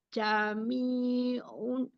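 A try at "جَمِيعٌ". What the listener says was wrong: Ini bukan jami'un dong. Ini kan hurufnya iya ya.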